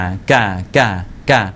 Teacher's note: ให้เราพ่นลมออกมาก้าก้าก้าเพื่อให้มันซอฟลงนิดนึงนะฮะ